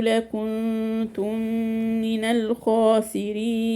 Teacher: لكنتم من جبنا غنتين هنا، دي الغنة الأولى إخفاء والغنة الثانية إدغام متماثلين. من الخاسرين وقفنا عليها 4 حركات.